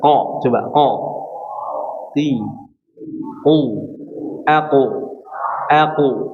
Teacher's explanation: huruf qaf enggak diberikan nafas ya. Jadi benar-benar murni, suaranya jelas.